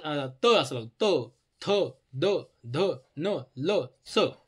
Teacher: त म्हणलं तर आपल्या दाताच्या मागच्या बाजूला ना आपली हे जीभ लागते म्हणून म्हणायचं त्याला दंत्य